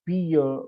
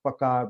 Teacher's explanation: प्रिय का पीय, प्रकार का पकार, मतलब र का क्या हो जाता है, लोप हो जाता है।